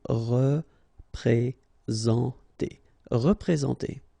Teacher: All right, remember that you get this N together, and then, well, it's a nasal, so it goes in your nose, and it's en